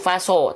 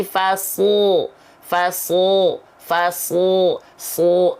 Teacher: Itu bibirnya jangan maju faso, tapi fasu, su. Mulutnya tetap dibuka.